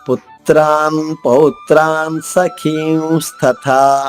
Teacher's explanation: ఖ అంటే మనం గొంతు నొక్కుబెట్టి ఒక్కసారిగా శ్వాసను బయటికి పంపిస్తాం, ఎక్కువ శ్వాస వెళ్తుంది. అందుకు ఎక్కువ శ్వాస మనం ఖర్చు పెడతాం కాబట్టి మహాప్రాణము అన్నాం.